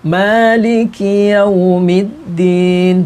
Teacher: Ini juga harus ngecas, jangan sampai Maliki, jangan Maliki Yaumiddin, tapi jangan terlalu, jangan Maliki, G, jangan dibaca ga, tapi ka. Pokoknya ada desis walaupun sedikit. Maliki Yaumiddin, bukan Maliki, ki.